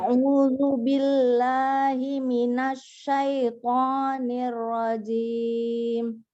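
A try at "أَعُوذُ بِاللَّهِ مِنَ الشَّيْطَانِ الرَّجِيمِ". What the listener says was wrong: Jimnya keras ya.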